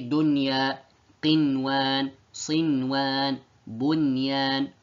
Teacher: we are to make the noon apparent in these four words